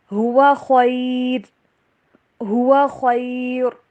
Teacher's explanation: اگر ہم یہاں پہ سٹاپ کرتے ہیں، وقف کرتے ہیں، تو پھر را کو باریک ہی پڑا جائے گا